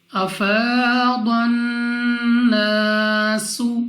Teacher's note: الف سے پہلے زبر ہے الف مدہ، 2 سیکنڈ تک کھینچ کر لمبا کر کے پڑھنا ہوگا. سین کو سیٹی والی آواز کے ساتھ پڑھیں گے · نون مشدد، غنہ کر کے پڑھیں گے، یعنی ناک میں لے جا کر پڑھنا ہے. الف سے پہلے زبر ہے الف مدہ، 2 سیکنڈ تک کھینچ کر لمبا کر کے پڑھنا ہوگا.